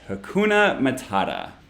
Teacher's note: obviously the middle syllable in each word is the stressed part